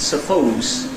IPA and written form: səˈpəʊz (suppose)